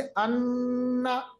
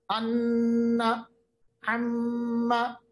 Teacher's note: आप देखिए आपकी आवाज जो है नाक में जा रही है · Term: गुन्ना